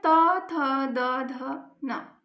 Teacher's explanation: ये त वर्ग वाले इनका जो उच्चारण स्थान है वो है दंत।